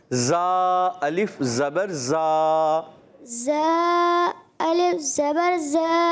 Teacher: زال الف زبر زا یہ زال نہیں, یہ ہے زا. یہ ہے سیٹی والا